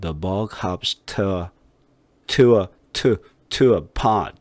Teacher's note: to라고 발음하지 않게 하고 t 이렇게 그러니까 우리나라 말로 트 소리가 나게끔 하는 게 거의 맞아요